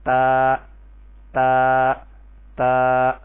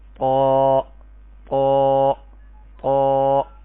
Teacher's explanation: تا کو باریک کر کے پڑھیں گے اور قا کو پر کر کے پڑھیں گے